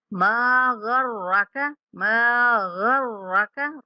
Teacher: ما پڑھتے ہوئے ناک میں آواز نہیں لے کے جائیں گے، ماں نہیں پڑھیں گے، ما پڑھیں گے منہ کھول کر۔